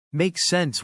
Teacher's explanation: you can simply shorten that and say make sense with a rising intonation